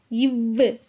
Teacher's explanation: இது மேல்வாய் பல்லை கீழ் உதடு பொருந்துவதால் பிறக்குது